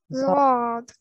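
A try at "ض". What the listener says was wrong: Yeah, so there's not a z, it's not a buzzing sound there. Zod.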